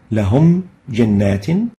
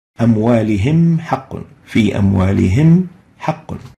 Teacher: So the letters for idhar are all letters apart from meme and ba. The rule, keep both the meme sakina and the following letter fully exposed, which means pronounced clearly without any modification